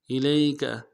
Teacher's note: لام کو یا کے ساتھ ملانا ہے الی میں، یا الین بغیر کھینچے پڑیں گے